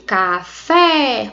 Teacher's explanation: eu tenho um acento agudo que ele representa o som aberto · Observe que quando eu digo café, o som ele é aberto. Então, se eu quero indicar um som aberto em uma determinada palavra, eu tenho que utilizar um acento agudo.